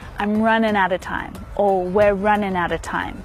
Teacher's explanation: You might hear people say outer, but most commonly outer, outer time. And time is a stressed word there, so we hear it really clearly.